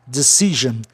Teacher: Aí a sílaba tônica fica em CI